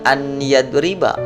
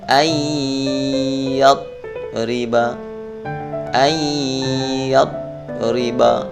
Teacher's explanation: maka bunyi suara nun mati ini dimasukkan ke dalam huruf ya, huruf idgham. Bukan dibaca an yadriba, tetapi langsung nun matinya dihilangkan. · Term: idgham bi gunnah